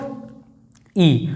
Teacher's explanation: लगभग मुंह बंद सा रहता है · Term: संवृत्त स्वर